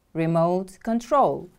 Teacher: device or mechanism for controlling something from a distance remote control the stress is on the second syllable